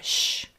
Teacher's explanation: we have an SH digraph with our lips puckered forward